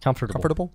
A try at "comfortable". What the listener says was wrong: wrong. In the South, you don't pronounce T's.